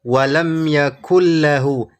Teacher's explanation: Idgham tanpa gunah. Tidak ada gunah atau dengung dari huruf nun karena bunyi nunnya hilang.